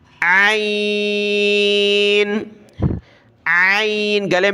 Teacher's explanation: جس طرح ہا کو گلے سے نکالا جاتا ہے اسی طریقے سے عین کو بھی گلے سے نکالنا ہے، صاف طریقے سے ادا کرنا ہے۔